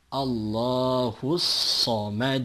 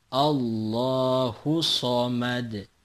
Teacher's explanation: kita membaca huruf shod secara double atau seakan-akan ada dua